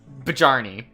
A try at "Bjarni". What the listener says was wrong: No, not quite. But it's a J used in another sense. To give it a yeah sound. It's not silent. It just has a different sound.